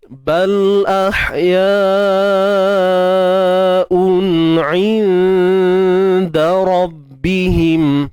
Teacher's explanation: 'Inda, sembunyikan nun ikhfa di sisi huruf dal. 'Inda dengung yang nipis betul, tetapi jangan sampai kita nak nipiskan dengung tu sehingga kita tak perasan. Takut nanti hilang terus unsur dengung tu. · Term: ikhfa hakiki